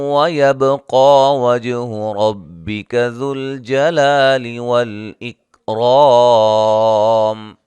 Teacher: یہاں نون ساکن کا اظہار، لین ہا الف مدہ، فا الف مدہ، ملانے کی صورت میں نون تنوین کا ادغام مع الغنہ، با پہ قلقلہ کریں گے، قاف کو موٹا ادا کریں گے، مد اصلی ہے، جیم پہ قلقلہ کریں گے اور را کو موٹا ادا کریں گے، لا مد اصلی ہے اور را کو موٹا ادا کریں گے، الف مدہ ہے۔